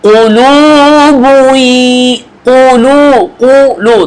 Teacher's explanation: দুইটা দম্মা কিন্তু একসাথে কিন্তু আমরা দুইবার ঠোঁট গোল করতেছি না